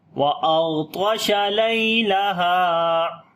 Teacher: لام کے بعد یا لین نرم پڑھیں گے